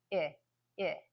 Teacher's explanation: the short I is also a front vowel but it's behind the long e little bit it's a little bit farther back not too far I so